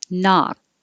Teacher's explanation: You don't hear the K unless it's connecting to a vowel.